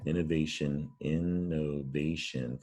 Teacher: it's not pronounced the way it looks we pronounce it shun or maybe shin depending on where you live